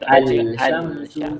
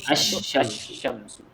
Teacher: Ataupun kita panggil idgham ni maksudnya memasukkan masukkan dalam huruf yang bersabdu. Asy-syamsu kita tak baca al-syamsu, tak bunyikan lam.